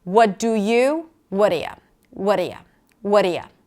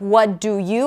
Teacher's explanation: So it's not what do you, I'm not pronouncing the full vowels. So I'm reducing the vowel to a schwa because the entire word is a little less important.